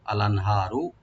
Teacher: যেটা আছে এখানে আমরা এজাহার করব, আর হাটাকে রাইট দিব, এখানে আনহা গলার শেষ থেকে আসবে, আর একটু ডিপ করে পড়বো